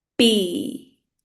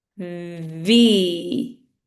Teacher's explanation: However, the V, my lips are not together. My teeth are on my lips. So it's V. And my lips never touch for the V.